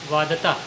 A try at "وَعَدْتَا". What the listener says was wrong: وعدتا وہ دال جو ہے پڑھا جا رہا ہے لیکن مل جا رہا ہے. وعدتا